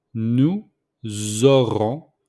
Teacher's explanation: Nous aurons. So we make the liaison between nous and auront with the S. So the S became mostly the Z.